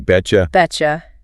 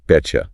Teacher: the T sound at the end of bet and the J sound at the start of you blend together to make a T sound.